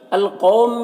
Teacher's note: الف لام حروف قمری قاف کے شروع میں ہے تو لام کو پڑھیں گے، الف کو نہیں پڑھیں گے۔ قاف حروف مستعلیہ میں سے پر پڑھیں گے، یہاں پر واو لینے سے نرم آواز کے ساتھ جلد پڑھیں گے۔